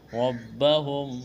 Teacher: نتقوا، واو ساکن سے پہلے زبر ہے، واو لین ہے، بغیر کھینچ کے پڑھنا ہے۔ ربہم، را کے اوپر زبر ہے، موٹا کرنا ہے